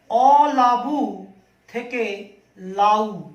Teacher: দেখো, মূল শব্দ কিন্তু অলাবু। এই অলাবু শব্দ থেকে অ চলে গেল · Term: আদি স্বরলোপ